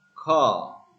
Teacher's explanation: It is non-rhotic. The R drop at the word end. In car, we say car with a long vowel.